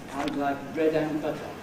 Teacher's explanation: with the strong form of ‘and’ /ænd/ and a rather ambiguous prosody